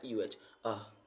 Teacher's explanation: इसमें अ को आधा बोलना है, मतलब ज़्यादा स्ट्रेस नहीं देना है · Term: लेजी साउंड